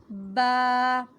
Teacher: दोनों होंठों को मिलाना है, दोनों होंठों के तरी वाला हिस्सा मिलेगा